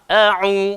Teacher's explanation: So, dia punya bunyi a. Ain keluar dekat tengah tekak